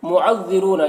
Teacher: را کے اوپر پیش ہے تو را کو پر پڑھیں گے، اور یہاں پر واو ساکن سے پہلے را کے اوپر پیش ہے تو واو مدہ ہوگا، اسے 1 الف کے برابر کھینچ کر پڑھیں گے، اور جس حرف پر زبر زیر پیش ہے اسے جلد پڑھنا ہے۔